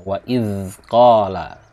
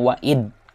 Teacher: lidahnya dikeluarkan kemudian tidak dikeluarkan semuanya tapi sedikit, keluarkan sedikit kemudian digigit kemudian ucapkan dzal